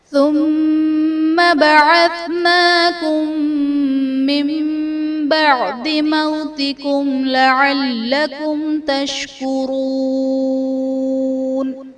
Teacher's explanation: ثم میں میم مشدد ہے، یہاں پر غنہ کر کے پڑھیں گے۔ بعثناکم میں میم ساکن کے بعد دوسری میم ہے تو یہاں پر ادغام شفوی کا قاعدہ ہوگا، یعنی میم ساکن میں ہم غنہ کر کے پڑھیں گے۔ · بعثناکم میں میم ساکن کے بعد دوسری میم ہے تو یہاں پر ادغام شفوی کا قاعدہ ہوگا، یعنی میم ساکن میں ہم غنہ کر کے پڑھیں گے۔ من بعد میں نون ساکن کے بعد حرف با ہے تو یہاں پر نون ساکن کو میم سے بدل کر اخفا کریں گے، یعنی غنہ کر کے پڑھیں گے، یہاں پر اقلاب کا قاعدہ ہوگا۔